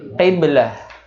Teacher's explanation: Jadi ha yang besar, yang ada di tenggorokan bagian bawah. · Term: ha besar